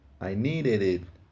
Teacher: o último D do need soa como o nosso R em português